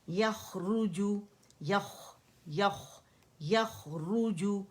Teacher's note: را موٹا ہے, جیم باریک ہے, یخرج, اور خوا تو ہے ہی موٹا, یخرج, اس کا رخاوہ شو کریں گے, ٹھیک ہے.